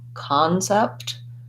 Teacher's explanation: really want to be light and short on that first syllable i do have words that have the c-o-n that say a stressed vowel like for example concept there i have an ah vowel · There I have an ah vowel. That's because it has first syllable stress and it sounds more like ka.